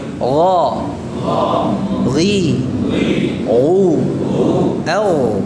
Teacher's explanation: kalau ghain itu dibaca dengan jahr, yaitu menahan udaranya. Udaranya ditahan.